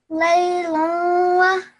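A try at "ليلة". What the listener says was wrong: Okay, well done. That was brilliant.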